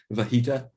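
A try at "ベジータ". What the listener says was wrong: I think it's Bahita with a B. B as in boy.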